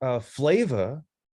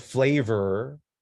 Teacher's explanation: if we're saying flava, right, instead of flavor, right, this is called R-lessness.